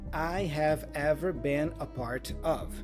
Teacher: So the N for been joins with the vowel A, been, and the A here has a schwa sound